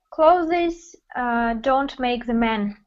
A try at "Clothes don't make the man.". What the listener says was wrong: Clothes. Да, вот надо стараться, чтобы там и с было.